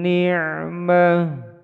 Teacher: tak marbutoh ketika berhenti atau wakuf, disukunkan berbunyi huruf H.